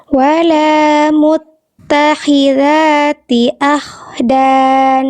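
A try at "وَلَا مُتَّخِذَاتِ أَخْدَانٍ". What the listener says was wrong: Nah, ini kurang. Dikit lagi kayak agak semi-semi H kecil lagi. Kurang keluar. Jadi bunyinya tadi masih sempat samar-samar kayak H kecil.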